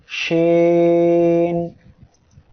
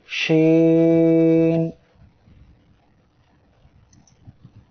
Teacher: শিন অক্ষরটি জিহ্বার মধ্যখান তার বরাবর উপরে তালুর সঙ্গে লাগিয়ে উচ্চারিত হয়